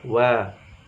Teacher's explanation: Waw dimajukan dulu bibirnya agar sempurna.